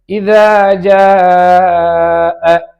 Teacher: தாலுடைய மஹ்ரஜ் நுனி நாக்கு மேல் பற்களின் ஓரத்தில் இணையும் பொழுது தால் உண்டாகும்